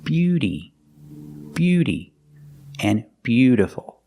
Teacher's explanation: the T in both of these words is pronounced like a fast D beauty Beauty and beautiful remember the second word is not beutyful · We see that T in both of these words is pronounced like a fast D.